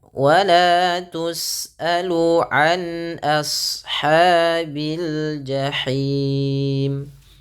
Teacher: ketika melafalkan ashab, a-nya tipis, shadnya tebal